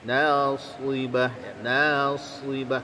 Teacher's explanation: Nasibah ya, tadi amilatun ya, nun itu huruf tipis, senyumkan dia, jangan hanya amilatun ya, tidak ya, amilatun nasibah ya. Shad itu di antara huruf yang memiliki sifat isti'ala, juga sekaligus memiliki sifat itbaq ya. Sebagian besar lidah kita naik ke langit-langit mulut kita. Nasibah ya, nasibah karena naik, jadi dia menebal bunyinya itu ya.